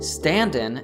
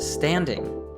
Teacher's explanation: natives often drop the G in words ending in ing, stand-in instead of standing